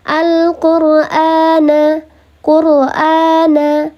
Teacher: Karena dia panjang dua harokat, hamzah panjang dua harokat, menyerupai mad badal. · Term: mad syabih bil badal